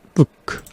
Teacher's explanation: 소리를 우처럼 충분히 입술을 모으지 않기 때문에 우리말 의처럼 들리기도 합니다. 보시면요 으크, 제가 일부러 의처럼 들리게 하는 거예요.